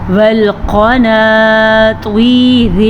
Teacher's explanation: جب را کے نیچے زیر ہوگی تو را باریک پڑھی جائے گی · قاف کو بھی پر پڑھنا ہے، طا کو بھی پر پڑھنا ہے، اور اس را کو پر پڑھنا ہے اور اس را کو باریک پڑھنا ہے